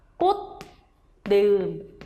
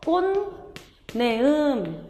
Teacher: 음절 끝소리 규칙이 적용이 돼요. 그 다음에 이 뒤에 있는 니은으로 인해서 앞에 있는 파열음 디귿이 비음으로 바뀌죠. 그래서 꽃내음 이렇게 발음이 끝나는 거예요.